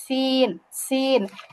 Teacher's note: জিহ্বার আগা সামনের নিচের দুই দাঁতের আগার সঙ্গে লাগবে, সিন, সিন। তাহলে কিন্তু মাখরাজেরও পার্থক্য আছে, বুঝছেন?